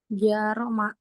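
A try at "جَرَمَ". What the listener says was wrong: Janya pendek, jangan jaroma, tapi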